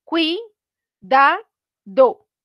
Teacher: en la primera sílaba tenemos la unión de una vocal abierta y de una vocal cerrada. Entonces, ahí se nos está formando un diptongo.